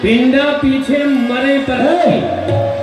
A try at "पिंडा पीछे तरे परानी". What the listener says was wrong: मरे नहीं तरे परानी,